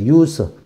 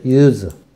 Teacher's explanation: 사용이라는 명사로 사용할 때는 요것이 발음이 use라고 발음됩니다. use. 무성 발음이죠. 무성음. use가 되고, 이게 동사가 돼서 사용하다라는 동사로 사용되면은 발음이 유성 발음답니다. 유성음.